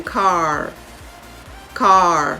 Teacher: can you hear the a flowing into the r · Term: r controlled vowel sounds